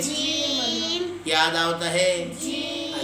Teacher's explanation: ایک حصہ زبان کی نوک ہے، ایک حصہ درمیانہ والا حصہ ہے اور ایک حصہ زبان کی جڑ ہے۔ اور جو درمیانہ والا حصہ اوپر کے تالو کے ساتھ جب لگتا ہے تو اس سے جیم ادا ہوتا ہے